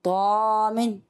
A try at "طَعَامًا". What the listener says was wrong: طعامن. اچھا عین کو باریک. طا موٹا، طعام. اور عین موٹا نہیں, عین موٹا ہوگا تو الف بھی موٹا ہو جائے گا. آپ موٹا کر رہے ہیں, آپ نے صرف طا کو موٹا کرا. طعام. طعام موٹا نہیں کرنا پیارے بچے, باریک کرنا. طعام.